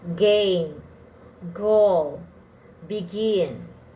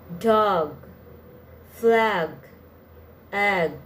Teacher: G sound is pronounced with a small puff of air at the beginning of words · As with all stop consonants, it's important to know what you should or shouldn't aspirate the G sound. The G is pronounced with a small puff of air at the beginning of words and syllables. Note, however, at the end of words, the G follows the final stop roll and is not aspirated.